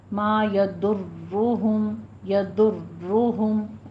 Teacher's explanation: ما یضر، ضاد بھی پر ہے، را بھی مفخم ہو جائے گی اور را پہ تھوڑی تکرار بھی ہے، ٹھیک ہے، بس ڈبل تکرار ہے، اس سے زیادہ نہیں کرنی۔